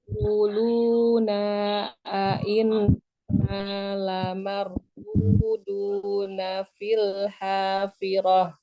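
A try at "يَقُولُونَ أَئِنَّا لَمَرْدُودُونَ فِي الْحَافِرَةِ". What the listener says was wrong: Pas kuna nggak usah jeda. Kuluna. Ya kuluna duduna roh. Jadi jangan tadi kedengarannya kuluna inna. Kuluna inna mana suaranya?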